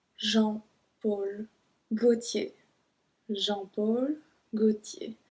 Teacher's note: Just note that we don't pronounce the L. We don't say Gaultier.